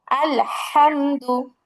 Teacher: জিহ্বার আগার কিনারা সামনের উপরের এক পাশের দাঁতের গোড়ার সঙ্গে লাগিয়ে উচ্চারণ হবে কি? লাম।